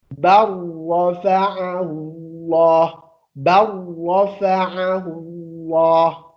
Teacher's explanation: Bal rafa'a. Tapi kita nggak boleh baca jelas bal pakai lam. Nggak boleh. Harus loncatkan ke ro.